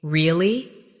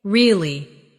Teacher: Say, really? With a rising tone to show surprise. Now say, really, with a falling tone to show you don't believe someone.